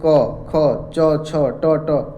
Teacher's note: अघोष कोई कंपन नहीं होगा इनके उच्चारण में।